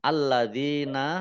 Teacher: lamnya dibaca dobel ada tasdidnya dalal kasroh Ya Sukun Mad thi'i dua harakat alladzina kata sambung